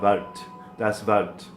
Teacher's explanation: It looks like wort, but it's really a schwa sound with a, starts with a V sound and then a schwa